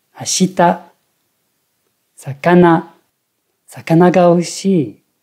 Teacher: La première mora est basse, toutes les suivantes sont hautes. On a une prononciation basse, haute, haute. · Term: accentuation plate